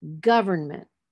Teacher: the stress will be on the third from the end